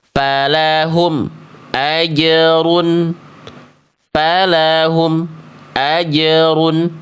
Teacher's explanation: Karena bunyi mim sukunnya dibaca tertahan. M-nya putus.